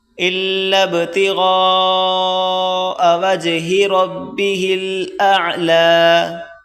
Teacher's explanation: بڑی مد 4 الف کی مقدار کھینچی جاتی ہے، اس کو 4 الف کی مقدار کھینچ کر پڑھیں،